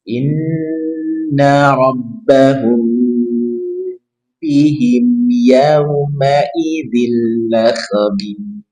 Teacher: Ingat ini ikhfa syafawi yang sukun bertemu dengan ba. Tahan 2-3 harokat dan dengungkan.